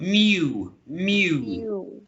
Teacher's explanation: with this, we have to add an intrusion sound, which is y.